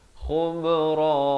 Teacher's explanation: kha di hujung kerongkong, ba ada lantunan, khubra.